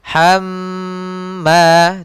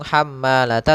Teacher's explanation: hamma tidak langsung hammalata tapi ditahan dulu nya 2 harakat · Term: gunnah